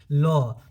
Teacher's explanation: ल का जो उच्चारण स्थान है आपका क्या है? दंत्य है।